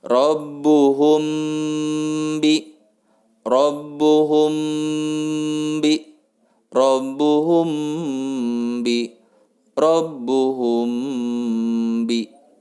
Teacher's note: mim sukun bertemu dengan huruf ba mesti ditahan dua harokat